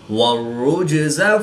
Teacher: جیم ساکن ہے تو یہاں پر قلقلہ صغریٰ کر کے پڑھیں گے